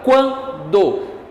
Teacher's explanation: primeiro uma semivogal, depois uma vogal, mas é um som nasalizado, por isso é um ditongo nasal